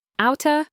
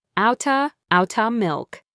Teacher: the T sound in out, changes to a soft D sound, a flap T, and it links directly to the word of, which sounds like a.